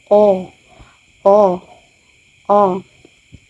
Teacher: Pang-apat ay ang gitna na palikod. Ang o o o.